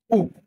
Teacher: Seterusnya dia akan bergerak kepada vokal U yang berbunyi U, yang mana lidah akan bergerak ke belakang dan naik sedikit dan bibir akan dimuncungkan bulat ke depan. U. Aliran udara akan keluar secara berterusan tanpa tersekat.